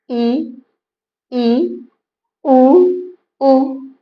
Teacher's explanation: जिन स्वरों के उच्चारण में मुख्य द्वार लगभग बंद रहता है। अगर लगभग बंद रहे तब उसे हम लोग बोलते हैं संवृत स्वर।